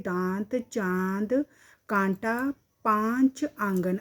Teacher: अनुनासिक वे स्वर है जिन्हें बोलते समय हवा मुंह के साथ-साथ नासिका नाक से भी बाहर निकलती है